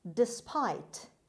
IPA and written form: dɪˈspaɪt (despite)